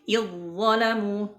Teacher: zal yang sukun bertemu dengan dha ya. Idh-dhalamu dimasukkan ke dha-nya ya